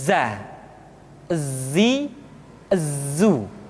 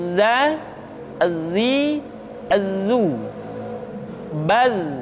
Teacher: ketika kita mengucapkan huruf Z, suara kita mengalir, akan tetapi nafas tidak boleh mengalir. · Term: al-jahr